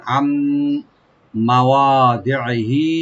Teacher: নুন সাকিনের পরে যখন মিম আসছে, এখানে নুনটা মিমের সাথে এদগাম হয়ে গুন্না সহকারে পড়া হবে।